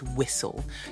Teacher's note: also in the word whistle you don't actually hear the T do you